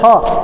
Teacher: ह, एकदम कंठ से निकलता है ह। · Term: कंठ्य वर्ण